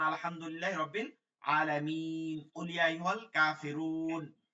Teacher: কাফিরুন র ওয়াও পেশ রু মাদের হরফ, তারপরের হরফে ওয়াকফ হইলে তাহলে 3 আলিফ টেনে পড়তে হয় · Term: মাদ্দে আরজি